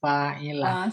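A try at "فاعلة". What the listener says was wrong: Bukan, fa-nya nggak panjang.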